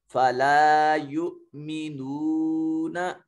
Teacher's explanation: फला युमिनून, हमजा के ऊपर सकून की अलामत है, हमजा साकिन है। जब हमजे के ऊपर साकिन की अलामत आए या जज्म आए तो उस वक्त इसको झटके से अदा करते हैं